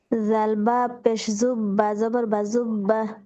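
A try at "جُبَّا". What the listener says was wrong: আপুর নরম হরফগুলোর মধ্যে সমস্যা আছে, যা উচ্চারণ হচ্ছে না। জাল বা পে জুব্বা জবর বা জুব্বা।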